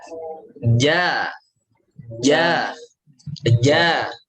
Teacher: Betul-betul nempel ya kalau jim ya, nempel ke langit-langit. · Bukan angin yang ngalir, tapi ada dia punya sifat jahar. Jelas. Yang namanya jahar itu inhibasu jaroyanin nafas, tertahannya aliran nafas. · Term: huruf jim